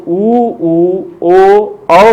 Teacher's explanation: जब हम बोलते हैं तो हमारे ओठ की आकृति वर्तुल हो जाती है, यानी गोलाकार हो जाती है। इसलिए इसे हम वर्तुलाकार या वृत्ताकार स्वर के नाम से भी जानते हैं।